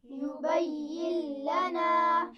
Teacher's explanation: ملا کر پڑھیں گے لیکن غنہ نہیں ہوگا